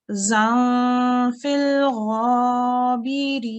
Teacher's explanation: There's a noon sound in this za. And the ikhfa sound is slightly nasalized, but it's a noon